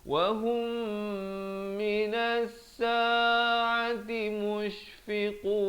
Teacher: Di sini idgham, kena dengung betul-betul 2 harakat, mim mati bertemu mim